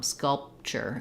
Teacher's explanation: Sculpture, it's an unreleased P.